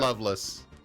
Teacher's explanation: I have a tendency to drop my non-emphasized vowels, so I went total schwa with it.